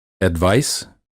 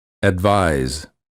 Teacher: the first word of the pair ends with the voiceless consonant and the second with the voiced one